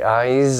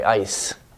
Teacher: dry eyes i dry ice it's different these are different words so it's important even at the end of words we keep that voicing